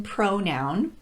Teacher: There's the O sound, as in pronoun, the ah sound, as in profit, and the schwa vowel, as in protect.